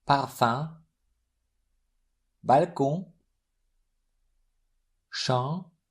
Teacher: As far as M and N are concerned, they are silent themselves, but they influence the preceding vowel, turning it into a nasal one.